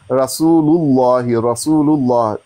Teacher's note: मोटा कर लाम जलाला पुर पढ़ेंगे